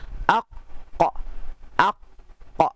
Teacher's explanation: Qaf dia belakang sikit, pangkal lidah menekan ke ujung ni dekat anak tekak. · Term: huruf qaf